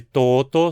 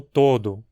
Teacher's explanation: a transformação de uma consoante desvozeada numa vozeada, como na evolução do latim pro português, onde toto se tornou todo, por exemplo. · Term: alenição